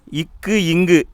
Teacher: இந்த 2 எழுத்தும் நாவுடைய முதல் பகுதி அன்னத்தின் அடிப்பகுதியை தொடுவதால் உருவாகிறது.